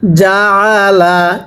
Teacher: আইনটা উচ্চারণের সময় গলার মধ্যে চাপ দিয়ে পড়তে হবে